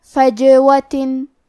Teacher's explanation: کلمت فجوہ میں جیم پہ جزم ہے تو کیونکہ جیم بھی حروف القلقلہ میں سے ہے تو ہم یہ حرف کو ہلاتے ہوئے یہ کلمہ کو پڑھیں گے